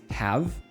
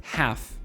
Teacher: the strong form is have with a V sound. The weak form is half with an F sound